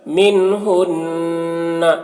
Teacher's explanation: نون مشدد ہے، یہاں پر نون میں غنہ ہوگا